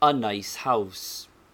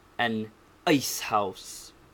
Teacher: noticing the hiatus or breathing between anne and ice this breath is the consonant hemza compare the bad pronunciation of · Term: hamza